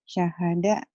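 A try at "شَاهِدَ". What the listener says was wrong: Terbalik. Barisnya di bawah 1. Syahidah ya. Syahidah.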